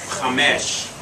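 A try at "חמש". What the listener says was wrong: Accent on the last syllable. Chamesh.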